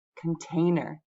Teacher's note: I want to show that the middle syllable gets the stress and I'm going to write it this way with the large circle in the middle.